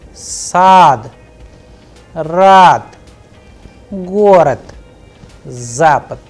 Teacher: Here the word is ending with de, god, but if you are pronouncing and pay attention minutely, then you would hear the sound of te, not de. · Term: devoicing